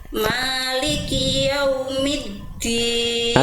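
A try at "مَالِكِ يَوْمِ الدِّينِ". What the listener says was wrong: Oke, jangan tin, dalnya jangan keluar nafas. Ya, dal juga sama kayak jim, jangan jim ya, karena dia punya sifat jahr, tertahan nafasnya. Maliki yaumiddin, bukan middin tapi middin.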